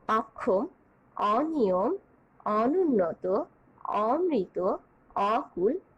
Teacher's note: এই উদাহরণগুলোতে অ এর অবিকৃত উচ্চারণ, অর্থাৎ অ এর মতোই উচ্চারিত হচ্ছে, বিকৃত হয়ে ও এর মতো উচ্চারিত হচ্ছে না